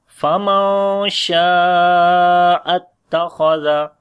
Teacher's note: After the nun sakin, the next letter is sheen. We make ikhfa, which is the light ikhfa. Sheen we long due to alif madda here, and also the big mad sign, which is madde muttasil.